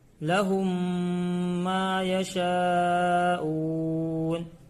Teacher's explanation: میم کو میم سے ملا کر گنہ کے ساتھ پڑھیں گے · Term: ادغام شفوی